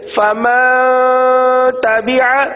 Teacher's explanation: نون ساکن کے بعد تا حروف اخفا میں سے ہے، اس لیے یہاں پر اخفا کا قاعدہ ہوگا. لہذا اخفا یعنی گنہ کریں گے. گنہ کی مقدار 1 الف کے برابر ہے، گنہ کی مقدار 1 الف کے برابر ہے.